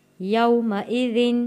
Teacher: یو حروف لین ہے، جلدی سے اور نرمی سے پڑھے جانے والا لفظ